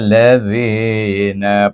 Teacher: suku kata zi itu hendaklah dibaca dengan mad asli dua harakat. Yang lain tu satu, la satu, zi dua, nun satu.